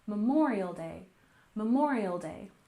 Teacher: Memorial Day. We stress the second syllable here, Memorial Day, Memorial Day.